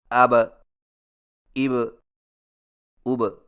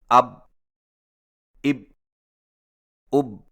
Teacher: حرف با پر جزم آئے تو دونوں ہونٹ آپس میں مل کر الگ ہو جاتے ہیں اور قلقلہ ہوتا ہے